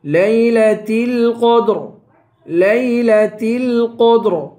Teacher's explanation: قاف کو پر پڑھیں گے، آخر میں را ہے، را کو پر پڑھیں گے